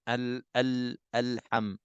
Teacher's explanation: Gunanya yang betul-betulnya iaitulah kita nak kena izharkan lam mati tu. Kena jelaskan bunyi lam mati, jangan terlantun, jangan kita tersakta, alham jangan terberhenti ataupun mungkin tak jelaskan lam mati.